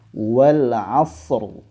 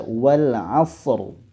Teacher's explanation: dia menebalkan huruf ro sehingga dibaca wal asr